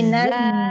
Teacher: Naz itu sukun, za. Tapi karena dia za itu punya sifatul huruf, sifatnya rohoa, lalu dia punya sifat sofir.